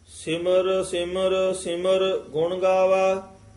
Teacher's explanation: ਤੀਸਰੇ ਸਿਮਰ ਪਦ ਤੇ ਠਮਕ ਹੈ